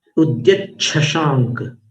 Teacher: उद्यत शशांक, यहाँ पर संधि हो चुकी है, इसलिए शशांक जो है ना उसमें श ना होकर के वो छ बन गया है